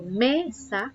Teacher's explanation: Si yo digo mesa, ¿dónde está la mayor fuerza de voz? En la sílaba me, ¿no? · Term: sílaba tónica